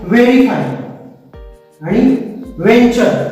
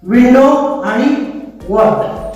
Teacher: परंतु दोघांमध्ये एक छोटासा बेसिक फरक आहे, तो म्हणजे व्ही चा व म्हणताना आणि डब्ल्यू चा व म्हणताना, या व्ही चा व म्हणताना आपलं जे ओठ असतात त्या ओठातली आतली बाजू आपल्या दातांच्या वरच्या भागाला चिटकते व्ही असा उच्चार करताना. परंतु डब्ल्यू चा जो व आहे त्याचा उच्चार करताना आपले जे ओठ ते गोल होतात व, आणि व्ही म्हणताना आपल्या ओठांचा आतला भाग दातांना चिकटतो.